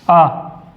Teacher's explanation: सिर्फ आ का उच्चारण होता है मध्य से, इसको मध्य स्वर कहा जाता है